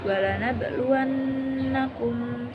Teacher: Qalqalah Sugra karena huruf ba sukun berada di tengah-tengah kalimat cara bacanya dengan dipantulkan ringan